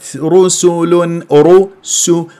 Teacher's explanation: انه الراء مفخمه لانها مضمومه والسين مرققه